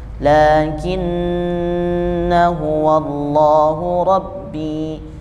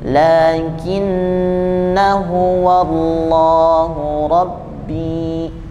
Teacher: Dia ada pada ayat 38 lakinnahu wallahu rabbi, itu ada bulatan kecil di atas alif yang bersambung dengan nun tasydid, yang itu tidak dibaca panjang. Ini huruf alif yang di atasnya ada bulatan yang berbentuk lonjong dibaca ketika waqaf saja dan tidak dibaca ketika wasal.